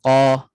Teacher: pangkal lidah naik Tengah Lidah Tak naik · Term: infitah